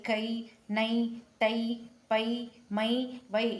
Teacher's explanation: மெய்யுடன் கூடி தனி உயிர் மெய்யாக வரும்போதும் இக்கு கூட்டலை கை, நை, தை, பை, மை, வை இது போன்ற ஓரெழுத்து ஒரு மொழிகளிலும் இரண்டு மாத்திரை அளவு வரும்